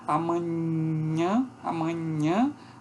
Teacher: a oclusão que ocorre com a parte média da língua no céu da boca que são as palatais